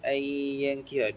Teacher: Nun bertemu dengan ya idgham ma'al gunnah. Kita masukkan huruf itu dan dengungkan dia.